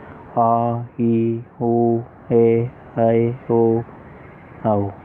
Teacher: दीर्घ स्वर इनके उच्चारण में कस्य स्वर की अपेक्षा इनके उच्चारण में मिस्टेक हो गई है दोस्तों। इनके उच्चारण में हर्ष स्वर की अपेक्षा दुगुना समय लगता है, अर्थात 2 मात्राएं लगती हैं। उसे दीर्घ स्वर कहते हैं, जैसे आ, ई, उ, ए, ऐ, ओ, आओ।